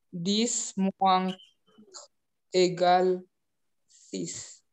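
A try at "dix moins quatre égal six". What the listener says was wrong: Dis? Yang empatnya belum dibaca.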